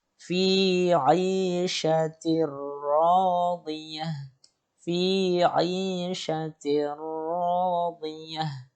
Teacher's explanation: Di situ ada ta marbuthah berharokat kasrotain bertemu dengan ro, ya. Maka dibaca dengan bila gunnah, tidak mendengungkan atau tidak dilamakan bacaannya.